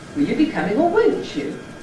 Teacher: it’s a little rise starting on ‘will’ and then a new rise starting at a different point, on ‘come’, and then gradually going up to the Nucleus, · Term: Climbing Head